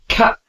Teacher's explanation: notice how the air stops for a moment before being released. For example, try k and feel the break. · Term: stop sounds